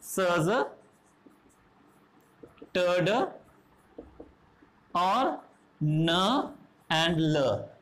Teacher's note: Active articulator is the blade of the tongue and the passive articulator is the teeth ridge. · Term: alveolar sounds